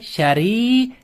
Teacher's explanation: ra harfimiz ingichka o'qiladi. Chunki o'zi nima bilan kelyapti? Kasra bilan kelyapti.